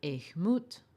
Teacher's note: E low tone moot high tone